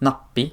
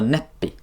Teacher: a preceding short A in the stem transforms into an E. So from the verb fanap, I say is not nappi, but rather neppi. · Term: front gradation